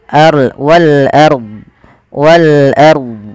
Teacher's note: Ro tafkhim yaitu rnya dibaca dengan tebal.